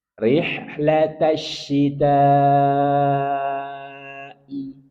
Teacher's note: Betul-betul ketika kita membaca hamzah i diperjelas. Jangan sampai ditarik atau digabungkan dengan huruf setelahnya.